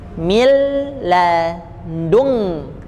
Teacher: Ini nun bertemu dengan kaf disebut dengan ikhfa, tapi bunyinya ng, cenderung bunyi ng. Kenapa? Karena pangkal lidah, ya, pangkal lidah menempel ke langit-langit itu huruf kaf dekat dengan g, huruf g.